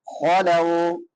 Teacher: لام کے بعد واو لین ہے، نرمی سے ادا ہوگا. واو ساکن ما قبل فتحہ ہو تو واو لین ہوتا ہے.